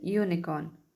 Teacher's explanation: तो वो Y का साउंड दे रहा है, ना कि U का